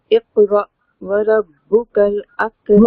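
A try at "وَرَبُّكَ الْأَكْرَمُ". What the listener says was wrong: را کو موٹا پڑھیں گے.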